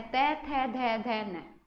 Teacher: देखो तय थे, यहाँ से क्या कर रहे हैं, जीभ जब टच करती है तय, तो जीभ जो है ऊपर दांतों को टच करती है, तो दंत से बोला जाएगा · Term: दंत्य व्यंजन